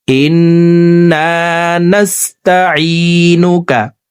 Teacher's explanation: ইন এখানে ওয়াজিব গুন্না, 3 সেকেন্ড পরিমাণ গুন্নাহ করে পড়ব।